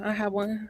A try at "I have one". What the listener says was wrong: you see you're saying had and have